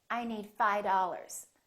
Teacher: that v in the word five just kind of disappears